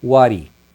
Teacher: Tira o H e aí você emenda aqui, como é o T, entre vogais vai ter aquele som de R, what he. Aqui o told him, o him também perde o H.